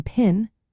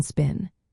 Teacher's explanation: Aspiration is the burst of air that comes with some consonants, like the P in pin, but not in spin.